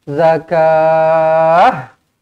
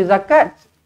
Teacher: Kalau nak berhenti pada ta marbutah ini, maka kita kena baca dengan huruf ha mati. Zakah. Jangan zakat.